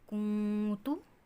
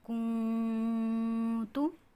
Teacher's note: نون ساکن یعنی کہ نون کے اوپر جزم ہو یا تنوین اور آگے حروف اخفا میں سے کوئی حرف آ جائے تو نون، اس نون کی آواز کو ہم نے ناک میں ادا کرنا ہوگا، غنہ خفیف سے ادا کرنا ہوگا، اس نون کی آواز کو چھپانا ہوگا. کنتو، کیف پیش نون کن، تا پیش تو، کنتو.